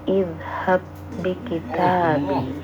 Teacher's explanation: Jadi cara bacanya langsung masuk ke huruf yang kedua tanpa dikolkolahkan terlebih dahulu ya. Kalau kita urai idhab, setelahnya adalah huruf kolkolah ba, tapi bertemu dengan huruf ba di depannya, maka tidak perlu dibaca kolkolah, tapi langsung dibaca masuk ya, langsung dibaca masuk ke huruf yang kedua. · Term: idgham mutamathilain